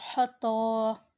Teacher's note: یا حتی، ہا کو ٹھنڈی سانس کے ساتھ ادا کریں اور تا کے اوپر کھڑی زبر ہے، اسے کھینچ کر ادا کریں